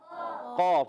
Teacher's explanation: زبان کی جڑ جب تالو کے نرم حصے سے لگتی ہے تو ادا ہوتا ہے قاف